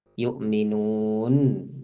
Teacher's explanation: Nun itu tentu sifat bainiyah, pertengahan antara syiddah dan rokhawah. Yu'minun, ada sisa huruf sedikit.